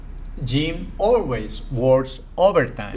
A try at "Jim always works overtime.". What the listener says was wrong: Listen to this, connect it better. Jim always works overtime.